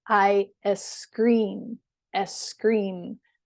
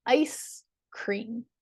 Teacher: I scream they tend to say I es scream es scream they put in like a little e in front of that because that's how it would typically be pronounced in Spanish